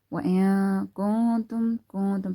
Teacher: So we're gonna be doing ikhfa as well here. We're gonna be taking the sound of the noon into the nose. · noon is silent, and after that there is kaf from haruf ikhfa. So we're gonna be taking the sound of the noon into the nose.